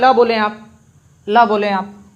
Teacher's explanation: ल में हमारी जीभ ऊपर ही लटक गई, हमारी जीभ जो है ऊपर ही चिपकी रह गई, और जो हवा अंदर से आई फेफड़ों के द्वारा, है ना, फेफड़ों से निकल के जो हवा बाहर आई मुंह के माध्यम से बाहर निकली, तो वो हमारे दांतों मसूड़ों को छूते हुए बाहर निकली। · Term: पार्श्विक